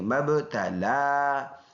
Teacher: میم اور با کو ملائیں گے اور با میں قلقلہ کریں گے، آواز مڑ کے آئے گی ، لام کے اوپر کڑی زبر ایک الف کے اندازے سے